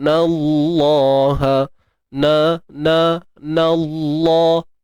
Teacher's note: Inna, nun tu beri atas kan. Jadi kalimah Allah tu automatik jadi tebal sebutannya.